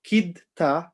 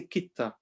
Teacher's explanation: because the Dal has a Sakin and the Ta has a Shadda, we will just ignore the dal completely. And instead of saying kidta, we'll say kitta.